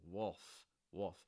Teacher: that l is not actually pronounced that's something you'll hear it's more like a dark l sound